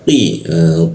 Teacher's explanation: huruf qi posisinya di siku tenggorokan, lidahnya kita naikkan sehingga rongga udara terkunci, tidak ada hembusan udara